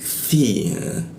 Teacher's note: Lidah itu digigit dia, ujung lidah digigit.